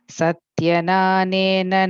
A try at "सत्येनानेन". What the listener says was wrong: second time the satye okay second time you said satya or something so satye